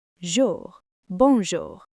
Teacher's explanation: It's not a hard English R. Think of it as a slight gargle.